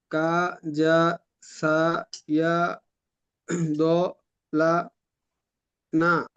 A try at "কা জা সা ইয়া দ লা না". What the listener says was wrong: মাশাআল্লাহ, সুন্দর।